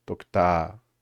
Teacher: instead of like raising the pitch a lot, it's more I guess about the volume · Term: definitive accent